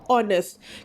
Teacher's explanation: H dia silent kerana kamu tak payah pronounce. Kamu tak payah sebut H dia. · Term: H ini silent